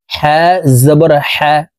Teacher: হা জবর হা হরফের উচ্চারণ হলুকের মধ্যখান থেকে পড়তে হবে কারণ হার মাখরাজ হলুকের মধ্যখান থেকে হবে হা জবর হা খ